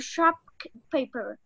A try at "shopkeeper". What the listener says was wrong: So you practiced a lot, but one small mistake: shopkeeper, not shop paper.